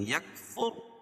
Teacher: را پور پڑھی جائے گی کہ را ساکنہ سے پہلے پیش ہے. اب بھی کھڑی زیر قائم مقام یا مدہ کے، اس کو ایک الف کے برابر کھینچ کے پڑھیں گے.